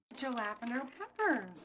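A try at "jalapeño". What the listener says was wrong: Actually, in Spanish, the J is pronounced more like an H.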